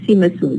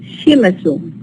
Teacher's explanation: They changed the sa to sha in this context when it is followed by the high front tense vowel E. Always in this environment, the sa becomes a sha.